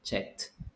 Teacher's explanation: the last sound that you're producing, like the K, doesn't have vibration. So you say check. No vibration. So pronounce the ED like a T.